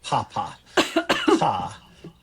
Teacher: you can feel your lips open and a little puff of air starts to come out right before your voice box start to vibrate. It's not a big gap, but there's a gap there.